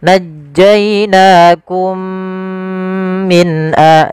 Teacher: kita masukkan mim yang pertama kepada mim yang kedua kemudian ditahan dengan gunahnya. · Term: idgham mimi